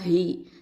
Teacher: அடுத்தது ஹ கெசரா ஹி, ஹ அப்படிங்கிறது அகசல் ஹல்கு கீழ் தொண்டை எழுத்து.